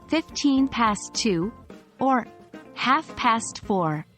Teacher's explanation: When telling the time, English speakers usually stress the minutes if they're not on the hour. For instance, we say 15 past 2 or half past 4.